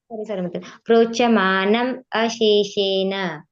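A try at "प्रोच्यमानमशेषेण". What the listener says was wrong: ಪ್ರೋಚಮಾನಮ ಎಳಿಬೇಕಲ್ಲ ಅಲ್ಲಿ ಮ ಹೇಳಿದ್ರೆನೆ ನಿಮಗೆ ಸರಿಯಾಗಿ ಕೂಡೋದು ರಾಗ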